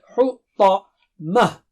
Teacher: طا موٹا اور اونچا ہے